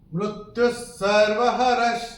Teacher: मृत्यु सर्वहरश्चाहम्, तो ये जो विसर्ग हमको दिख रहा है हमारी किताब में, य के बाद उसके बाद का अक्षर है स, और जैसा कि हमने पहले भी आपको बताया था यहाँ पे इस वाले श्लोक में कि विसर्ग के बाद जब स आएगा तो विसर्ग का उच्चारण आधा स होगा